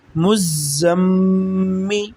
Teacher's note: زا کے ساتھ سیٹی کی طرح آواز نکلتی ہے زا کو پڑھتے ہوئے